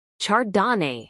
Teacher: acentuación en la tercer sílaba